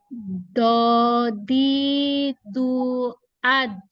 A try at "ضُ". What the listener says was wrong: Do-nya belum kena. Do-nya belum kena di makhrajnya. Do ditemukan dulu. Al-do, al-do. Al-do, bibirnya al-do. Al-do. sedikit tapi tidak terlalu monyong banget sih.